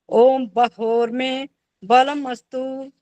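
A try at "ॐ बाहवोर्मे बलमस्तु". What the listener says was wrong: अंग स्पर्श में दोनों जगह गलत हुआ। जहां में बोला है आपने, वो मां था।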